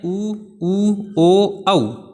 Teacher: जिनको बोल लेंगे तो जो अपने ओष्ठ हैं, होठ हैं, वो वर्ताकार स्थिति बनाते हैं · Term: वर्ताकार स्वर